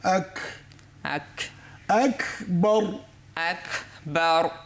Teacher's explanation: কাফের মধ্যে কি আছে হামস আছে একটু বাতাস জারি থাকবে